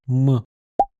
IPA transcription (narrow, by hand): mˠ